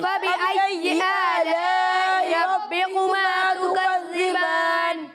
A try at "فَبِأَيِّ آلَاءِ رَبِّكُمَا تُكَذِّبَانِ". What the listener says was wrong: آپ ابھی بھی ربکما پڑھ رہے ہو. بے نہیں، ربی. ربے نہیں، ربکما.